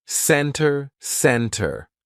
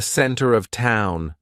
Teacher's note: usually if the t comes after an N we drop that t and we do not pronounce it Center Center no it's not center it's almost like we're spelling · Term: silent T